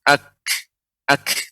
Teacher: Kaf ini ya lidah bagian tengah menyentuh langit-langit yang keras. Ak, tapi cepat. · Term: huruf kaf